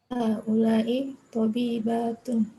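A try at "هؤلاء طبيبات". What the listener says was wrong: Sahih.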